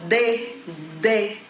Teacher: Estão percebendo que a língua, né, ela fica entre os dentes. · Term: consoantes